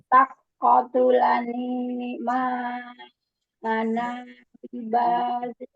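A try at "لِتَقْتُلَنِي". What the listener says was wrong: Nanya tidak jadi panjang, Mi. Nanya tidak jadi panjang.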